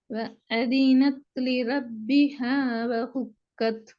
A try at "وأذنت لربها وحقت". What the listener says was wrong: وحقت. وأذنت لربها وحقت. இந்த இடத்துல பெரிய ஹா பத்தி பேசுறது, சின்ன ஹாட சவுண்ட் வரணுமே.